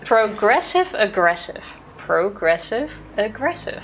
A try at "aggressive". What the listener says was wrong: No, you're already pronouncing too hard.